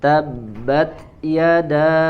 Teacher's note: da ya dibaca panjang 4 sampai 5 harokat